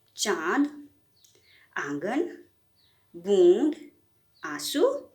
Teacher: अनुनासिक वर्णों का उच्चारण नाक और मुंह दोनों की सहायता से किया जाता है।